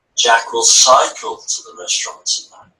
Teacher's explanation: shifts the emphasis to cycle not drive or walk